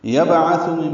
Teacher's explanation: با ساکن پہ قلقلہ ہے، عین وسط حلق سے ادا ہوگا، تھا نرمی سے ادا کریں گے.